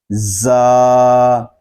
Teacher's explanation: را، آگے زا، یہ حروف صفیریہ میں سے ہے، اس کو ادا کرتے وقت سیٹی کی آواز نکلے گی۔ زا، یہ حرف زبان کی نوک اور دونوں دانتوں کے اندرونی کنارے سے ادا ہوتا ہے